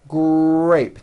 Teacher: It is important to understand that the R sound is the strongest sound of the blend, and your lips often come forward before you even say the word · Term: R blends